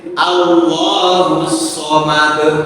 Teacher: jadi qalqalah itu bunyinya e bukan a tapi e.